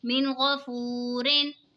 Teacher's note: نون ساکن کے بعد حروف حلقی کا غین آ رہا ہے تو اظہار ہوگا، یعنی غنہ نہیں کریں گے۔ اور ساکن سے پہلے پیش ہے وہ مدہ ہوگا، دو زیر کی تنوین۔